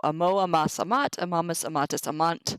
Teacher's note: The O is a big enough sound that the A gets dropped.